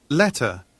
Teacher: 모음과 모음 사이에 T가 있는데 요거를 그대로 살려줬습니다. · 영국식 영어에서는요, T 사운드를 제대로 살려주는 경우가 훨씬 많죠. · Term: British English